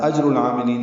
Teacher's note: جیم ساکن پہ قلقلہ ہے